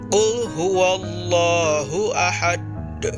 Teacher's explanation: huruf da di akhir ayat tersebut disukunkan dan dibaca memantul dengan berat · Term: qolqolah kubro, qalqalah kubra